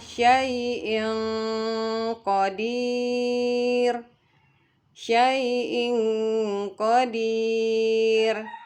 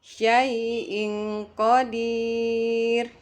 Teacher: jadi bunyi tanwinnya lebih dekat ke bunyi ng karena makraj Nun berjauhan dengan mraj dari huruf q